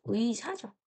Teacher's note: 첫 소리에 오는 의 있죠? 얘는요, 의로만 발음해요. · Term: 첫 음절의 의